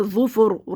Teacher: وقف کی صورت میں پڑھیں گے ظوفر، را ساکن سے پہلے پیش ہے تو اس را کو موٹا پڑھیں گے. دیکھیں زبر یا پیش ہوتا ہے تو موٹا پڑھتے ہیں، زیر ہوتا ہے تو باریک پڑھتے ہیں.